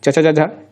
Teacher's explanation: अब तालव्य, तालव्य किनका उच्चारण जो है तालु के साथ होता है, जीभ का तालु के साथ संपर्क होने के बाद उनका उच्चारण सही ढंग से हो पाता है।